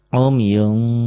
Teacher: kalau ketemu Fa khusus ikhfanya agak agak bunyi m